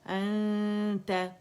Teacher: ہم نے یہاں اظہار نہیں کرنا، انت انت، اور اقواہ درجے کا یہاں پہ مرتبے کا ہوگا، یعنی بڑی مضبوطی سے زبان کو آپ نے تا کے مخرج کے پہلے قریب لے کے جانا ہے، نون کو چھپاتے ہوئے، غنہ ریٹین کرتے ہوئے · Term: اخفا